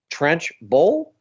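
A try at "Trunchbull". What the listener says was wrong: Trunch. Say brunch. Trunch. Trench? Is that what you were saying?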